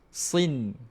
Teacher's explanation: Dia tak perlu dengung sampai 2 harakat tuan-puan. Dengung asli saja. Sin. Jangan sampai 2 harakat.